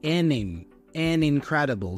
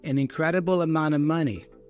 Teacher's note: So the N for N is joined with the I for incredible.